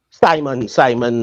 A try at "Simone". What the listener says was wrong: You can't call a guy like that Simon.